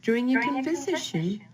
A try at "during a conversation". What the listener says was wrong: It's during a conversation. Word stress. This is the third word stress issue, so be careful.